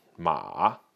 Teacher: but it's ma in a third tone